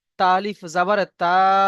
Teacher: আলিফের ডান দিকে জাবার এসছে, তাকে আলিফ মাদ্দা বলা হয়, আলিফ মাদ্দাকে এক আলিফ পরিমাণ টান দিয়ে পড়তে হয়